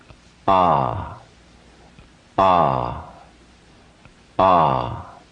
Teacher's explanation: the sound that you get in the sanskrit alphabet is ah not only is there a lengthening but there's also a widening of the mouth the upper jaw separates from the lower jaw